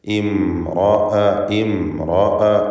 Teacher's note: ഇംറഅ എന്നതിലെ റാഇന് പൂർണ്ണമായ തഫ്ഖീം കൊടുക്കുക, തടിപ്പിച്ച് റാഇനെ ഉച്ചരിക്കണം. സാക്കിനത്തായ മീമിന് അല്പം പോലും മണിക്കാൻ പാടില്ല.